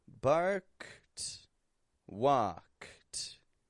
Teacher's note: I'm pronouncing both that K and the T sound.